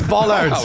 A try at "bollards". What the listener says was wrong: Weird emphasis on the end of that word.